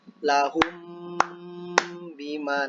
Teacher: dengungnya itu dibaca 2 sampai 3 ketukan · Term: ikhfa syafawi